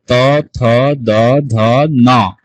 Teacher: সেটা হলো কি, মূর্ধন্য সবসময় মূর্ধ থেকে উচ্চারিত হবে, আর দন্তনটা সবসময় দাঁতে গিয়ে উচ্চারিত হবে, বা দাঁতের গোড়া থেকে উচ্চারিত হবে।